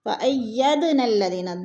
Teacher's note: دال ساکن حروف قلقلہ میں سے ہے تو اس کو ہلا کر پڑھیں گے